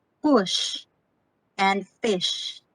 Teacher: you cannot feel any vibration from your vocal cords · sha is unvoiced consonant it is voiced counterpart is ipa phoneme ja